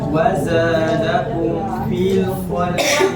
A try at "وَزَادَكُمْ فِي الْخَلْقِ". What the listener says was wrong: Masih lemah tuh fil. Dia gusinya agak ke belakang dari gini. Tempel fil khalqi itu tempel.